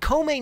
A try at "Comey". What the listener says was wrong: Why are you saying Comey? You're saying it like in Spanish. It's Comey. Like comer, if está comer.